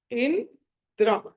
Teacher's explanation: ఇందులో న సగము ద సగము ర పూర్తిగా